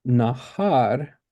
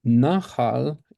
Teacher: nahar, har is the second syllable, and nahal, it's the stress on the first syllable. So, yes, they do end in different letters, but at the same time, the stress is different, and we have to kind of pay attention to that as we're listening as well.